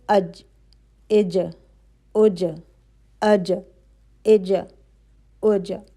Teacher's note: آپ کی زبان کی جڑ اوپر تالو پہ لگ رہی ہے · زبان کی جو درمیانی حصہ ہے وہ اوپر جا کے لگ رہا ہے اور پھر واپس ہٹ رہا ہے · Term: جیم